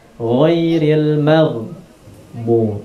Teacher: huruf ghain bukan huruf qalqalah, bukan huruf yang dipantulkan, sehingga tidak boleh dipantulkan